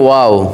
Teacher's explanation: এই ওয়াও হরফটা দুই ঠোঁটের মাঝখানের ফাঁকা থেকে পড়তে হয়। দুই ঠোঁটের মাঝখানের ফাঁকা থেকে পড়তে হয়।